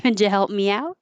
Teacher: The d and the y together make a j.